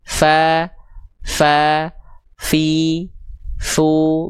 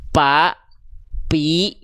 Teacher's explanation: Jadi si ujung gigi seri atasnya itu disentuhkan dengan bibir bawah bagian dalam yang basah yang area biru ini. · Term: huruf fa